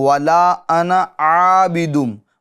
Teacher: ملانے کی صورت میں زائد الف کو نہیں پڑھیں گے